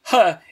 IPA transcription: h